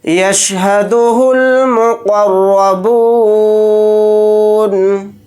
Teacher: یہاں پر قاف کو موٹا پڑھیں گے اور را کو موٹا پڑھیں گے